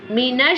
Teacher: shin like a whistle sound, and meem pronounced from the dry part of both lips